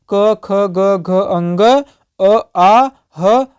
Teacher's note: तो कंठ से बोले जा रहे हैं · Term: कंठ वर्ण